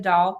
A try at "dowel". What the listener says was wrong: Not dowel. Dowel. Throw a W. Throw a W in.